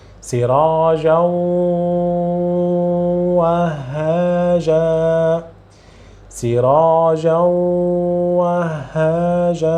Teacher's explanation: I am prolonging just to let you understand what you need to do. Your mouth, you are keeping pronouncing from mouth, but a part of air need to or should come out from the nose. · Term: nasal sound